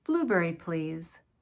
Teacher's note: This is a falling intonation because it's a statement.